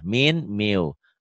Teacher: Min jadi miu. Itu idgham bi gunnah.